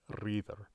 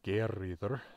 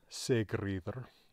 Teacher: Usually because it is following another element of the name, that F gets dropped and it just shows up as rýðr.